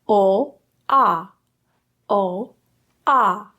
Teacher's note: The ah is much more open and much more relaxed in the lips.